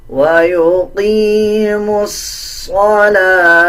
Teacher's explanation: میم کو ڈائریکٹ صوت کے ساتھ ملا کے پڑھا جائے گا۔